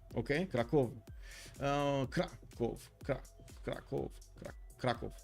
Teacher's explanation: stress on the first syllable in Krakow